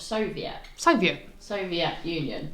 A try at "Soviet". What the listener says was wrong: It's not Soviet. You're adding a bit. You're adding too much twang. Less twang.